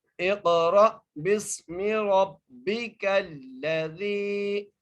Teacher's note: زال کو ہم ایک الف کی مقدار کھینچ کر بھی پڑھیں گے